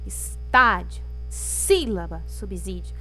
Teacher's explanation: proparoxítonas a sílaba mais forte é a antepenúltima estádio sílaba subsídio então a gente começa a contar da última